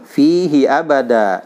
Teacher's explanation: Da tanwin ketemu dengan alif di akhir kalimat, jadi mad iwad 2 harokat ya.